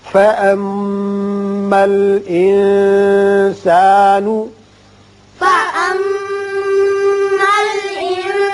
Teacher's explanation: میم مشدد ہے، غنہ کریں گے اور نون پر اخفاء ہوگا